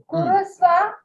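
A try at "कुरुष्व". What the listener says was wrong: Kurushva. It is Kurushva, not Kurusva. Kurushva.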